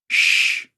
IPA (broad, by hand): ʃ